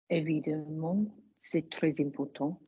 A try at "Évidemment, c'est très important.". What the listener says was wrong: But we weren't singing there, were we? Sing all the way through.